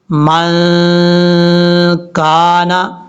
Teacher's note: یعنی اخفا کا غنہ ہوگا، آواز کو ناک میں چھپا کر پڑھیں گے